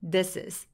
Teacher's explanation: this의 s와 뒤에 있는 i가 연결돼서 this is 라고 연결해 주시는데요.